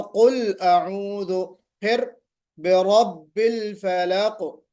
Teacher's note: قلقلہ نہیں کرنا ہے، لام پر قلقلہ نہیں کرنا ہے۔